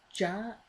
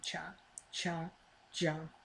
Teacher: ja is a voiced version of cha cha cha